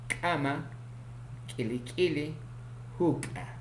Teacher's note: Consonante K, oclusivo glotalizado, velar, sordo, ocurre en posición inicial, medial y final